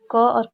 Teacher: कंठ ध्वनियाँ जो सीधे ही कंठ से निकलती हैं, अर्थात उच्चारण में जीभ या मुख में किसी भी भाग को छूता नहीं है उस वर्ड को बोलने से, तो उसे कंठ वर्ड कहते हैं, यानी कि क और ख।